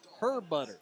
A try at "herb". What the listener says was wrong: Herb. The H is silent.